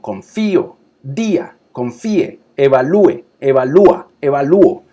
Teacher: yo voy a forzarla para que la vocal cerrada sea núcleo vocal · la vocal cerrada en la secuencia vocálica ahora tiene acento, tiene fuerza